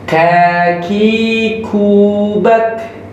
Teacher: Ingat kalau huruf kaf itu dia ada suara keluar nafas. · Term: Hams